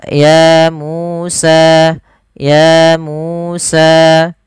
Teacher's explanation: ya Musa ya Musa harus sama panjangnya sepanjang dua harakat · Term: Mad thii